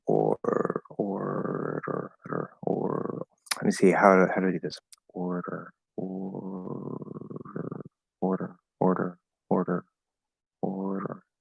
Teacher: especially to keep that tap instead of doing a regular d